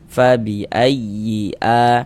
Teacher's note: Nah, karena huruf fa itu di antara sifatul huruf fa itu dia memiliki sifat hamas. Fabiayyi huruf ya bertasydid yang dia itu bukan idgham bighunah. Maka kita kasih nabr. Nah, kita tekan.